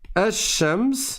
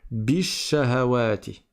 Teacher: quand j'ai une lettre solaire après le alif lam, je ne prononce pas le lem du tout